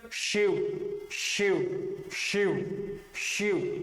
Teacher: तालू है ना जो मुख मुख में सबसे ऊपर का स्थान जो कठोर स्थान होता है वहां जीवा स्पर्श कर रही है